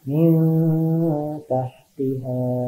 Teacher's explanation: Contohnya ada lagi min tahtiha, nun mati menghadapi huruf ta, dibacanya samar-samar, ditahan 2 harokat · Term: ikhfa